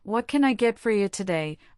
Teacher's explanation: The words can I blend together into canya. This is a prime example of how function words, small words like can and a get reduced to make the sentence flow. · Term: connected speech